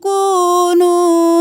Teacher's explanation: کاف پیش واو کو، نون پیش واو نو، دونوں واو مدہ ہے، ایک الف کے برابر کھینچیں گے